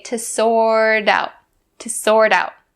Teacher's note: that t is standing in between two vowels so we change it to the d sound